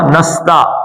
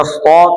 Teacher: نا 2 حرکتیں ہیں، نون الف نا، اور نس سین پتلا، سیٹی کی آواز آئے نس. تے پتلا نستا، اگر موٹا پڑے گا نستا تو کیا بن جائے گا؟ توئے بن جائے گا